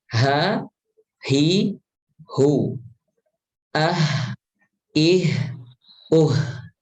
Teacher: Seringkali pengucapan huruf H ini kurang dialirkan. Padahal huruf H dia memiliki sifat hamas, dia juga memiliki sifat rokhawah, ya, rokhawah.